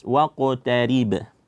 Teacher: karena qaf tebal, jangan sampai apa? Tebal pada huruf qaf ini dibawa kepada huruf yang selanjutnya